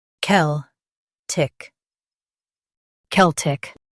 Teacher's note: Stress kel and keep tick soft.